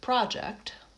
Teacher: we stress the first syllable when it's a noun. So for example, for the word project, the first syllable is lengthened and there's a pure vowel ah, project.